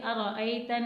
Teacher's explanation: نون مشدد ہے تو نون مشدد ہوگا تو غنہ ہوگا